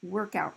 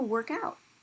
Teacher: if you use it as a noun, stress is on the first syllable. You use it as a verb, you stress the second